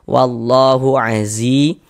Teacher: Nah, kemudian lafaz Allah dibaca panjang, tanda panjangnya ini alif kecil di atas huruf nih, atau harokat fathah berdiri. Maka lafaz Allah dibaca panjang, mad tabi'i panjang 2 harokat.